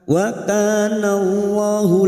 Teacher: lam jalalah sebelumnya fathah kita baca tafkhim